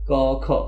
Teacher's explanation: জিব্বার গোড়া থেকে ক খ গ ঘ আসে, আর জিব্বার গোড়া অবস্থিত হচ্ছে কণ্ঠে, এই জন্য এগুলোকে বলা হয় কণ্ঠবর্ণ।